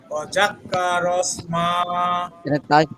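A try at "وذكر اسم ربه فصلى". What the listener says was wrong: এখানে তাসদিদ নেই, ওয়াজাকা।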